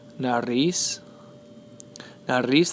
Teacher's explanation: Nariz, the stress is placed on the last syllable.